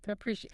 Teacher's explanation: The stress is on the second syllable, pre.